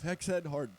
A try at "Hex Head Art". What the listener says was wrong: You see how you just said that? You said Hex Head Heart. why I always say Hex Head Art. See what I'm saying? It's Hex Head Art.